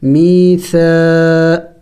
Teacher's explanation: یا مدہ ہے, اس کو کھینچیں گے